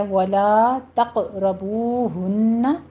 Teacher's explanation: لا کو منہ کھول کے ادا کیجیے، 2 کاؤنٹ کرنا ہے. فتح ہمارے پاس الف مدہ ہے.